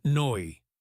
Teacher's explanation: An Australian might say no as noi.